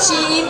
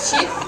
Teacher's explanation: in Korean, we don't distinguish the long vowel like sheet and the short one